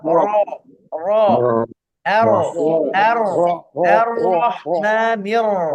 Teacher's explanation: Ro-nya tafkhim. Jadi tafkhim itu kalau dalam bahasa Indonesia tebel, ya itu terjemahannya. Tapi caranya adalah pangkal lidahnya naik. Ro, bukan ro.